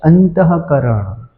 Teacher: એને વિસર્ગ કહેવાય અને વિસર્ગનું ઉચ્ચારણ હ થાય છે